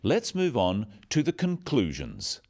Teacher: Stressing conclusions because it's the key word in this sentence. The other words stressed are the key words for understanding. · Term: sentence stress